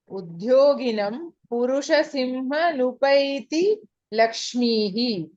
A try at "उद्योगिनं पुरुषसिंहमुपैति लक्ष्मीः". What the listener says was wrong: नकारः श्रूयते अत्र। ऐ एम् हियरिंग न देयर इंस्टेड ऑफ म। उद्योगिनं पुरुषसिंहमुपैति लक्ष्मीः। पुरुषसिंहम् उपैति। If you split it there, Purushasimham, then it becomes Upaiti.